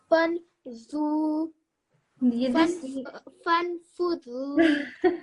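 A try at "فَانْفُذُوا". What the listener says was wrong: I think both of you don't like this letter fa. Say it again.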